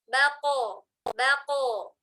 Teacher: Nah, jadi ba-nya tipis, qafnya saja yang tebal.